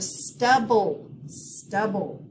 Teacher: we have a short u sound we have a quiet e and we're going to accent the first syllable